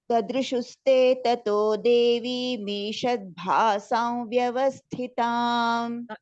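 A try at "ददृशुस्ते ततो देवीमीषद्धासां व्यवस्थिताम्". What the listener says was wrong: Did you say bhasa or it is dhasa actually? It is not bha, it is dha. Shadhasam vyavasthita.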